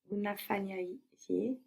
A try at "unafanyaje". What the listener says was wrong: But if you say unafanya je, it sounds like a separate word. But the word for how becomes part of the verb. Where does the accent go in Swahili words? The stress. The second last syllable, no? So when you put that je on the end of unafanya, well, the accent will move.